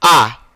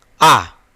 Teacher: जब हम आ पढ़ते हैं आ, तो ओठ जो है गोलाकार नहीं होता है। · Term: अवृत्तमुखी स्वर